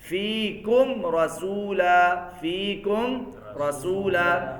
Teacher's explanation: اب میم ساکن بھی ہے، آگے را آ رہی ہے، تو یہاں پہ کیا ہوگا؟ اظہار ہوگا.